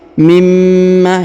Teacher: nun sukun menghilang melebur ke huruf mim yang bertasdid kemudian ditahan dan ditekan pada huruf mimnya jadi tidak Nun sukunnya tidak dibaca ya dengan kata lain Nun